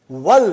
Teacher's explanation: now we are saying wal. We did not pronounce Hamza.